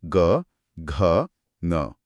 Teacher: सघोष जिसे घोष भी कहते हैं, उनके उच्चारण में कंपन होता है